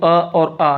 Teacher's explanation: ये देखो अ और आ ये हमेशा कंठ से बोले जाते हैं। दोनों के दोनों कंठ से बोले जाते हैं। इसलिए ये सजात सजातीय स्वर कहलाएंगे।